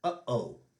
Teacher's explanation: closing your throat very quickly to make a separation between the notes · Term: glottal stop